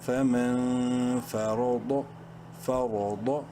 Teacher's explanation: فمن، فا زبر فا، را زبر را، را کو منہ بھر کے پڑھیں گے زبر کی وجہ سے، ضاد زبر ضاد، ضاد کو منہ پر بھر کے پڑھیں گے اور پراپر اپنے مخرج سے بولڈ کر کے